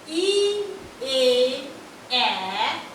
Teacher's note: ই এ এ সামনের দিকে উচ্চারিত হয়, তাই এরা তিনজন সম্মুখ স্বরধ্বনি